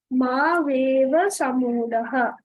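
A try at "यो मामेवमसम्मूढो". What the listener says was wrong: One ma is also there, no? Mameva ma sammudhaha.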